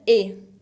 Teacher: Esa EST también se pronuncia E. La ST final no se pronuncian.